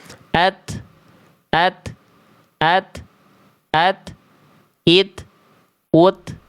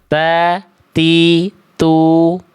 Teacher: Syiddah itu artinya tertahan suara. Karena suaranya tertahan, impact ke nafas yang harusnya mengalir jadi berupa hanya percikan saja. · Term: hams